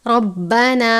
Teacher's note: रा के ऊपर ज़बर है, रा को पुर पढ़ते हैं। रब्बाना, ना नहीं पढ़ना बल्कि रब्बा ना पढ़ना है अलिफ की आवाज़ के साथ।